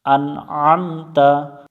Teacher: আইন গলার মধ্য থেকে উচ্চারণ করতে হবে, হামজা শুরু থেকে উচ্চারণ করতে হবে